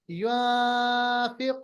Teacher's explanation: और रज़क़नाहुम, उसके बाद युनफिकूना नहीं पढ़ना है, हमें पढ़ना है युनफिकून। इस नून साकिन के बाद फा आ रहा है, इसको कहते हैं इख्फा। इख्फा, नून की आवाज को छुपाना है। युनफिकून, सही।